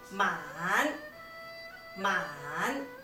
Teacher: it has a third tone that kind of dips a little